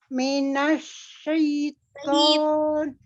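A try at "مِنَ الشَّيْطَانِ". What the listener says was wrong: Tonya jangan to, tapi to dibuka. Tarik, jangan monyong. Ya, diusahakan untuk menahan dulu ya. Menahan gerakan bibir bawah untuk maju ketika dia fathah.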